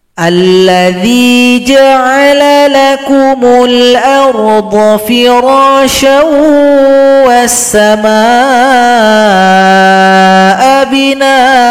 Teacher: jadi A-nya panjang kalau berhenti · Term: mad iwad